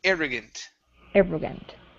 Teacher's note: Okay, good. Next is the word arrogant. Stress at the beginning.